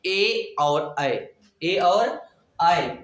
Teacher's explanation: ए और ऐ कंठ और तालु से बोले जाते हैं